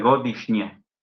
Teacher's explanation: Godishnie. Es S, se transforma en S con kvachica, es decir, una S reforzada por influjo de la palatal posterior, NJ.